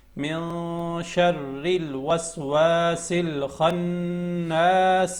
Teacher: اخفا میں آواز چھپا کے پڑھتے ہیں، ناک میں جو نون کی آواز ہے اس کو چھپا کے پڑھتے ہیں، واضح نہیں پڑھتے